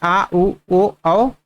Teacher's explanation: ठीक, अब पश्च स्वर में क्या आ जाएगा फ्रेंड्स, जो बचा है आ उ ओ औ, वो सब क्या हो जाएगा, पश्च स्वर, यानी जो पीछे से आवाज निकलता है उसे हम लोग पश्च स्वर कहते हैं